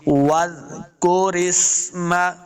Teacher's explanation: را کو سین کے ساتھ ملانا ہے، سین پہ سیٹی کی آواز آئے گی